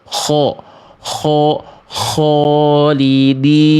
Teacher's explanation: tebalnya dengan cara mengangkat bagian pangkal lidah